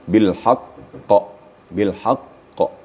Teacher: Kalau di akhir, itu disebut namanya qalqalah kubra, besar. Besar dalam arti jelas.